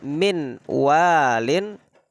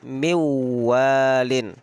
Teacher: kalau ada nun sukun bertemu wawu, maka langsung kita alihkan suara kita, lisan kita kepada huruf wawu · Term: idgham bi gunnah